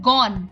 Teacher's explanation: যদি পরে মূর্ধন্য ন থাকে তাহলে অ এর উচ্চারণ অবিকৃত থাকে অর্থাৎ ও এর মত হয় না